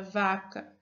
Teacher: Agora, pronuncie a palavra vaca. Se no momento da produção da palavra vaca você pressionar com a mão levemente o pescoço, poderá verificar que há uma leve vibração.